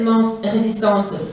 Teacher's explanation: les épithètes minces et résistantes partagent par exemple le son S, la voyelle I et les voyelles nasales. L'adjectif résistante présente la même voyelle nasale et la même consonne constrictive que son voisin.